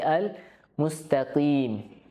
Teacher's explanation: jangan sampai ada udara yang terhembus ketika diucapkan Qi ya bisa tertukar dengan Kaf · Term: huruf q